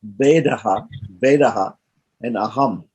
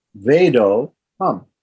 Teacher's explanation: that short A visarga turns into an O, right? And the next word, short letter A, is dropped completely. The short letter A is dropped completely, and we put in avagraha.